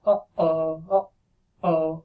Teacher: the glottal stop is the sound that we make, for example, when we say uh-oh, uh-oh. Okay, so that stop there, that's the glottal stop.